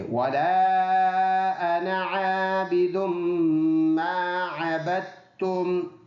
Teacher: عابدم، یہ والا الف مدہ ہے، اس کو پڑھنا ہے۔ اور یہ میم مشدد ہے، میم کے اوپر شد ہے، ناک میں آواز جائے گی، یہ حرف مدہ ایک الف کی مقدار لمبا کر کے پڑھنا ہے.